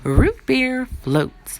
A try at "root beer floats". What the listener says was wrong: That's not fast enough.